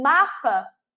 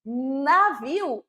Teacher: O som é muito igual, mas o movimento que eu faço é totalmente diferente. Então, quando eu falo mapa, meus lábios se tocaram. Quando eu falo navio, não se tocaram.